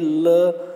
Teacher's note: पार्श्विक। तो इसके उच्चारण में हवा जीभ के पास से निकल जाती है